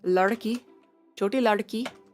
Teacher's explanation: You gotta bounce it. It's a duh, but it's also kind of an R.